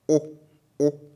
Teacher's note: it's perceived as though it comes through your nose, right? Your nose has an effect on the sound. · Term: nasal